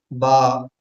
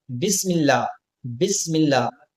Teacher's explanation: दोनों होठ मिलकर आहिस्ता से खुल रहे हैं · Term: हरफ बा